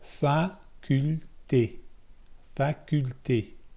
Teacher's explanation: I pronounce the T not by raising the tip of my tongue up, but by touching like the middle third of my tongue. That doesn't make sense, but touching a part of my tongue that's a little bit farther back from the tip, I touch that to the roof of my mouth.